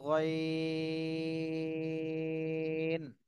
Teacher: গলার শেষ থেকে উচ্চারণ হবে তিন আলিফ টান দিতে হবে